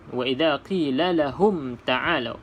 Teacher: Iaitu kita baca dengan mim yang jelas matinya. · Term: mim mati